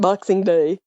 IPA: ɓoxinɠ ɗay